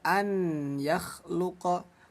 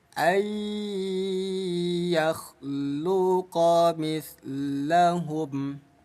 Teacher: Jadi cara bacanya bunyi nun. Kita masukkan ke huruf ya. Lalu dengungkan dua ketukan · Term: idgham bighunah